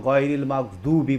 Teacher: জিভার গোড়ার কিনারা উপরের মাড়ির দাঁতের গোড়ার সাথে টাচ করে উপরের মাড়ির দাঁতের গোড়ার সাথে লাগিয়ে উচ্চারণ করতে হয় [মিউজিক] জিললাহা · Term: দোয়াদ